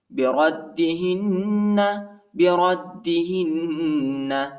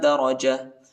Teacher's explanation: دال کو شدت کے ساتھ سختی کے ساتھ پڑھیں گے